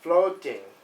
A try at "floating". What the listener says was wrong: Longer with the O. Floating.